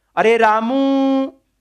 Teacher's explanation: अब ऊ के ऊपर आपने दीर्घ से भी ज्यादा समय लगाया, वो क्या कहलाएगा, प्लुत कहलाएगा